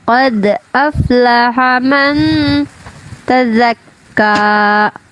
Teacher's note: Qad itu qalqalah sugra ya, qalqalah sugra kan berarti sikit aja ya.